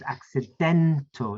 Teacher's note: It's a third syllable stressed word.